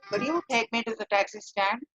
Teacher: It is a rising tone because it is a question.